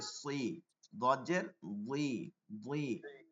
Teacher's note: জিহ্বার আগাটা একটু গোল হয়ে যায়, তালুর সাথে গোল হয়ে যায়।